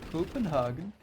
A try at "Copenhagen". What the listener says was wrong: I read chat, and apparently it's more Copenhagen. More of a V in there.